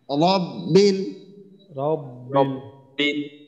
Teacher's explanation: জিহ্বার আগার পিঠ তার বরাবর উপরের তালুর সঙ্গে লাগাবো, বাকি জিহ্বার গোড়াটা আমরা উপরের দিকে উঠাবো